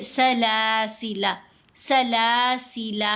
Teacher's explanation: لام کو لمبا نہیں کرنا، غلط ہو جائے گا کیونکہ یہ الف جو ہے یہ نہیں پڑھا جائے گا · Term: اضافی الف